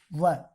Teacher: व दंतोष्ठम दांत और होठ के द्वारा बोलेंगे।